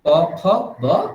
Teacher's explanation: দুটো ঠোঁট মিলিয়েই বকারের উচ্চারণ করতে হবে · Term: বর্গীয় ব